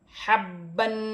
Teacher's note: ہا کو حروف حلقی میں سے حلق سے ادا کیا جائے گا، اور با مشدد بھی ہے اور تنوین بھی ہے، جمع کر بھی پڑھا جائے گا، تنوین میں غنہ بھی کیا جائے گا۔